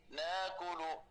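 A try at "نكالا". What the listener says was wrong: ناكلة ناكلة اللام مفتوحة.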